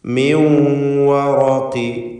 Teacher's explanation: മിൻ എന്നതിലെ സക്നത്തായ നൂനിനെ വാവിലേക്ക് ലയിപ്പിച്ച് മണിക്കണം. ഇദ്ഗാം ബിഗുന്ന നാഖിസ് നൽകി മിൻ വറഖി എന്ന് പറയുക.